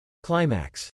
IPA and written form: ˈklaɪ mæks (Climax)